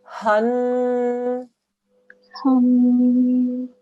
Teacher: Because it's a noon mushaddad, we do a 2-second nasal sound.